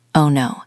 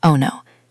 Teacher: You won the lottery?" That is terrible if your friend just lost their job. To show empathy, your voice needs to go down. It needs to be heavy and soft. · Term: voice slides down